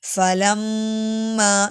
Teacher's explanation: میم پہ مشدد اس لیے غنہ کریں گے